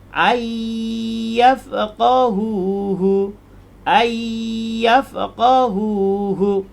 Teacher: Bunyi dengung tu adalah bunyi huruf ya.